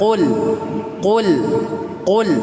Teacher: Qaf tidak perlu sampai tenggorokan. Jadi dia masih huruf lisan. Tapi lisan paling belakang tidak perlu sampai tenggorokan.